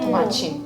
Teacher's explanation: I don't pronounce the T as T. I pronounce it as che.